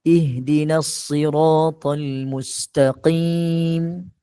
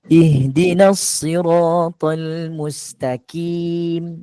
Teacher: Sepatutnya baca dengan qaf, tetapi dibaca dengan kaf